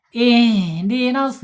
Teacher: si-nya harus tebal ya, karena pakai shod, jangan pakai sin. Enggak boleh ihdinas siro, jangan, itu pakai sin.